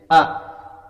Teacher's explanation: bukan di bibir, bukan di lidah, ya, bukan di ujung tenggorokan, tapi di pangkal tenggorokan.